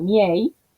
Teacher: la E es abierta y está en sílaba tónica